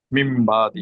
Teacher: নুনটা পরিবর্তন হবে, নুন পরিবর্তন হয়ে এটা মিম হয়ে যাবে। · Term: ইকলাব